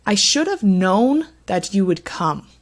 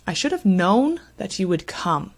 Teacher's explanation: the two words here that receive stress are the main verb known and the main verb come our pronouns I and you actually don't receive that stress should